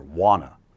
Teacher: Reductions, we drop the T altogether